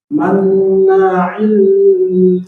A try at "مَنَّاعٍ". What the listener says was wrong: Jangan ditahan, langsung. Bukan nunnya ditahan, tapi aili. Nah, jangan ditahan. Tanwinnya gimana cara bacanya?